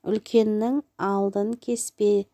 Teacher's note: Үлкеннің деген сөз бұл жіңішке дауысты, алдын жуан дауысты, кеспе жіңішке дауысты екен.